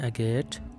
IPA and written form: ˈæɡət (Agate)